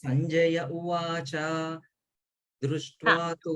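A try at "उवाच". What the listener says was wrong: Uvacha, like that sound, Uvacha. Cha sound should not come. Uvacha.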